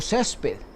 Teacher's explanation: césped tiene el acento en la penúltima sílaba